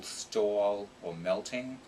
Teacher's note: a medium aspiration in a cluster or the beginning of an unstressed syllable